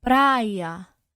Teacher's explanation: quando a gente vai pronunciar essas palavras, é como se o I, a vogal I, ela fosse prolongada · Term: semivogal I